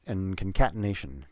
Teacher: And concatenation, now the word and has a D, but the word and is never almost never stressed. So we're actually just going to skip that D, because it's rare to say the D in the word and